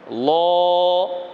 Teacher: এই যে আওয়াজটা বের করলাম একটু মোটা করে ল, মুখ স্বাভাবিক থাকবে, মুখ স্বাভাবিক থাকবে, জিহ্বাটা তালুর সঙ্গে লেগে উচ্চারণ একটু মোটা হবে